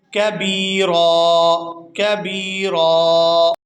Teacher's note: وقف کی صورت میں را پر 1 زبر ہوگی اور اس کے بعد الف خالی ہے تو یہ الف مدہ ہوگا، اور را کو 1 الف یعنی 1 سیکنڈ مقدار کے کھینچ کر ادا کریں گے